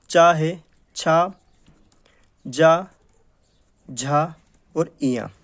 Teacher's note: प्रथम चरण, तो प्रथम चरण में तो स्पर्श होगा, ठीक है, 2 उच्चारण अवयव स्पर्श करेंगे, उसके बाद में संघर्ष मतलब घर्षण होगा, घर्षण के साथ हवा बाहर निकलेगी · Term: स्पर्श संघर्षी